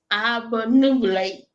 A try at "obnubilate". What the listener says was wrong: Slow down. Slow your tongue down. Obnubilate. Nubilate. Nope, you're saying too many syllables, boo. Obnubilate.